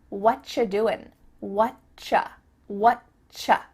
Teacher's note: we've cut out completely the word are, and the word you just becomes cha